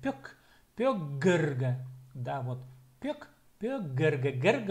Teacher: Глухое попало между двумя звонкими, оно озвончилось. · Глухое попало между гласными, а гласные, они же звонкие. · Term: озвончается